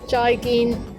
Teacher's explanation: both of the syllables joy and gain are both mid flat tones